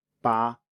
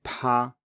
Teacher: when you say pa, you should feel a puff of air on your hand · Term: aspirated